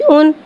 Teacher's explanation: 2 पेश को होठों की गुलाई के साथ अदा करके पढ़ेंगे।